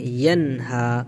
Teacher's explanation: کے بعد حروف حلقی کے 6 حروف میں سے ہا ہے، نون کی آواز کو ظاہر کر کے پڑھیں گے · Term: اظہار حلقی